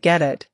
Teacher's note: The T becomes a quick D sound, especially in American English.